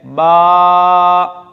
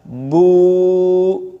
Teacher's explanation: یہ جو الف واو اور یا کی آواز لمبی ہوئی، یہ سینے سے ایک آواز نکلی ہے اور ہونٹوں سے باہر چلی گئی ہے، کہیں ٹکرائی نہیں، اسے کہتے ہیں، اس آواز کے نکلنے کا جو جگہ تھی وہ جوف دہن ہے.